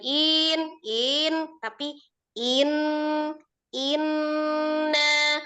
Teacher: kalau inna nun tasdid aja jadi dighunahkan saja tidak perlu dinabar